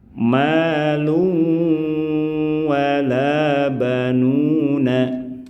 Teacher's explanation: Ya, saat bertemu dengan keempat huruf bertasdid ini, praktik membacanya setelah dimasukkan, setelah digabungkan, setelah melebur ke huruf yang bertasdid, maka harus menyertakan bacaan ghunah alias dengungan yang panjangnya kurang lebih ditahan dua harakat